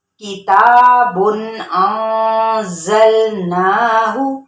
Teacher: یہاں پہ ظاہر اس لیے کریں گے نون کی آواز کو کیونکہ یہ آگے حمزہ ہے